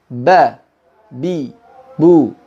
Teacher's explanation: membenturkan antara bibir yang atas dengan bibir yang bawah